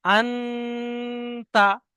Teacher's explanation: নুন সাকিনের আওয়াজকে নাকে তুলে এক আলিফ পরিমাণ গুন্না করে পড়তে হবে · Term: ইকফা